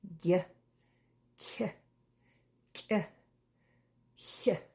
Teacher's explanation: They all have an invisible silent Y. We don't write it, but you can hear it.